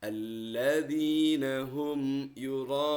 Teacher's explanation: yang kedua mim sukun bertemu dengan huruf ya alladziina Hum yurun maka mim sukunnya tidak berdengung mim sukun tidak masuk ke dalam huruf ya tapi jelas